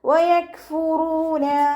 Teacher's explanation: വയക്ഫുറൂന, റോ വമ്മയാണ്. റോന് വമ്മ വന്നാലും നമ്മൾ ഉയർത്തിയിട്ട് വേണം ഉച്ചരിക്കാൻ. വൗമദ് കൂടെ വന്നിട്ടുണ്ട്, 2 കൗണ്ട് നീട്ടിക്കൊടുക്കുക.